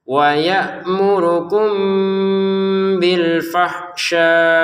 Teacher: mim sukun bertemu ba nanti baca dengan samar